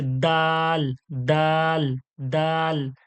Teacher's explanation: জিভের আগাটা দাঁতের গড়ায় উপরের দাঁতের গড়ায় লেগে শক্ত হয়ে আর পাতলা হচ্ছে দাল